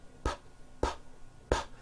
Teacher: saying the sound you're feeling any vibrations in your throat no your vocal cords are not producing a sound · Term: P sound